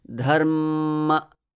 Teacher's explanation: i sort of hanged on that m before the release dharm and then cut the next syllable and inserted the one